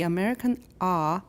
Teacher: it's not usually made with the tongue as far back as possible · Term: the American ah